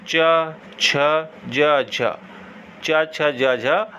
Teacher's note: अब आगे देखें स्पर्श संघर्षी व्यंजन कौन से होते हैं। यह व्यंजन उच्चारण करते समय एक दूसरे को स्पर्श करके तुरंत अलग नहीं होते हैं और अलग करने पर संघर्ष पैदा करते हैं